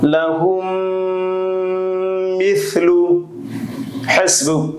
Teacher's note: মিম সাকিনের বামে মিম আসিলে দ্বিতীয় মিমে তাসদীদ দিয়ে গুন্নার সহিত মিলাইয়া পড়িতে হয়, ইয়াকে মিম সাকিন ইদগাম বলে।